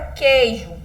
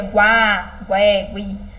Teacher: Eu escuto só o Q e eu junto aqui com E. Eu não escuto o som do U. Ele é ignorado, tadinho do U.